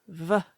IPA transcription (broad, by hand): v